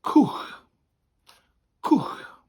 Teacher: It almost looks like the word cwtch, you know, a Welsh hag, a cwtch, but it doesn't have that T in the middle. So we got that oo sound from the W, and then the CH at the end is a h sound, as in loch.